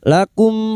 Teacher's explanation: mim sukun bertemu fa idhar syafawi. Mim sukun dibaca jelas tanpa mendengung. Lakum fastaqimu.